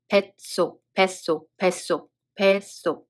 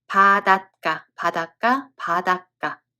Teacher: 사이시옷 is dropped, and the following consonant becomes tensed.